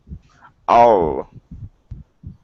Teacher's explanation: Give me a good L here instead of ow. All. Use your tongue.